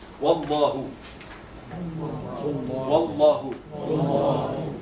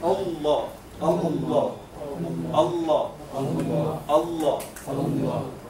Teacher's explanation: the lam in Allah subhanahu wa ta'ala would be heavy